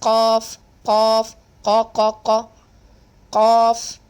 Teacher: It comes from the deepest part of the tongue